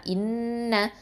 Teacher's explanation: ஹம்சா கெஸ்ரா நூன் ஷத்தா இன், நூன் ஃபத்தா ந, இன்ன. இந்த நூனில் ஷத்தா இருக்கிறதுனால நம்ம அக்மல் குன்னா கொடுக்கணும்